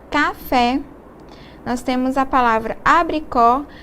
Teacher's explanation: no caso das vogais A, E e O, com acento agudo a pronúncia deve ser aberta.